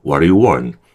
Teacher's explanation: 처음에 진입 신호 들어가니까 처음에는 좀 힘을 좀 줘야 돼요. 그리고 do하고 you는요, 약해지는 거죠. 그리고 want는 당연히 조금 세게 읽어줘야겠죠. 그래서요, 요 do you 할 때 얘가 일종의 슈화 현상이 벌어진다고 보시면 돼요.